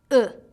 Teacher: slightly parted your jaw is slightly lower than for ooh and your tongue is high but not as high as when you say ooh let's try it uh some key words to help you remember